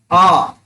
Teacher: यदि हम लोग आ बोल रहे हैं तो देखो हमारा मुंह जो है पूरी तरह से खुल रहा है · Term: विवृत